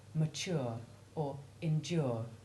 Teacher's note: a long u preceded by the basic t or d sounds as in mature or endure